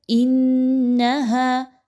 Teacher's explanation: اکثر لوگ یہاں پر بہت لمبا کھینچ کر پڑھ رہے ہوتے ہیں، ایسا نہیں پڑھنا. انہا، حمزہ اور نون کو آپس میں ملاتے ہوئے نون مشدد کا غنہ کیجئے. انہا، ہا الف زبر ہا، الف مدہ ہے، دو حرکات کے برابر اس کو پڑھیے.